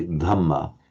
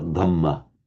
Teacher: The aspirated the, as we discussed before, it's not native to Burma, so you have to make a bit of an effort to do it